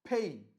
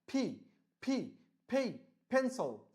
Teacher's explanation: ফি, মানে দুই ঠোঁটটা সংকুচিত সংকুচিত হয়ে, মানে এভাবে মুখে, তোমরা আমাকে দেখতে পাচ্ছ কিনা, এভাবে মুখের ভিতরে ঢুকে যাবে, তারপরে সজোরে দুটা ঠোঁট বের হয়ে আসবে বাতাস সহকারে